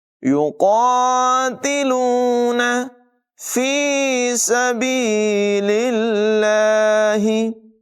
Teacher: لفظ اللہ کو باریک پڑھیں گے۔ یاد رکھیں جب لفظ اللہ کے لام سے پہلے زیر ہو تو اس کو باریک پڑھتے ہیں، پیش اور زبر کی صورت میں لفظ اللہ کو پر ادا کرتے ہیں، یہاں پر باریک ادائیگی ہوگی۔